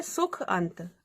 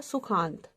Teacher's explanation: अब यहाँ छोटा आ और छोटा आ मिलके बन गया बड़ा आ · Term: दीर्घ स्वर